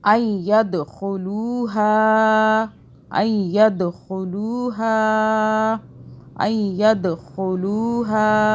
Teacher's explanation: ید دال پہ ہم جو ہے قلقلہ کریں گے، جھٹکے سے پڑھیں گے